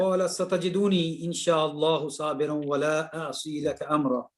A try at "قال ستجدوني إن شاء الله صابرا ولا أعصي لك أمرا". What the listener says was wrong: again, you don't make that dhamma long. Singular. Satajiduni. Yeah, do very short.